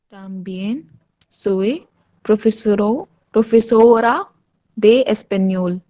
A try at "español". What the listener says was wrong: Español. ए को आ बोलेंगे, español.